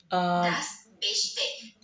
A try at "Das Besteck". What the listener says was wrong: ▁Das ▁Besteck. มั น ไ ม่ ใ ช่ ▁CH, ▁มั น คื อ ▁K. ▁Das ▁Besteck. ไ ม่ ต้ อ ง ไ ม่ ต้ อ ง ข น า ด นั้ น ก็ ไ ด้ ▁Das ▁Besteck.